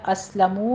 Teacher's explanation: فَإِنْ أَسْلَمُوا میں بھی نون ساکن کا قاعدہ اظہار حلقی ہے، اسلموا میں سین پر ہمس ہوگا سیٹی کی آواز کے ساتھ، منہ میں ہونٹوں کو گول کیجیے، واو مدہ ہے، 2 کاؤنٹ کرنے ہیں۔